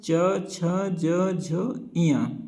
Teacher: तो च वर्ण का उच्चारण स्थान कहां से होता है? तालु से होता है और च वर्ण को जो है हम स्पर्श संघर्षी व्यंजन भी कहते हैं।